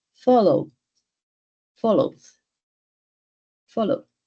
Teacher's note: Aquí la D es mucho más suave.